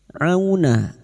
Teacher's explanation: Firuna au huruf ain jangan tertukar hamzah huruf ain wastul halqi atau tengah tenggorokan